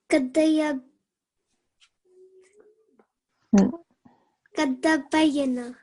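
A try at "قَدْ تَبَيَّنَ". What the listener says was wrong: Yeah, qatta. So you don't say the dal. Remember, qatta bayyana.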